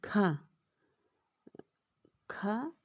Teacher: खा को हम बोलते समय हमारे मुख के अंदर किसी भी प्रकार का कंपन नहीं होता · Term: अघोष